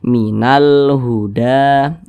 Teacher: lam qamariah biasa disebut juga dengan izhar qamariah karena cara bacanya huruf lamnya ini dia dibaca diizharkan Dibaca jelas begitu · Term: alif lam qamariah, izhar qamariyah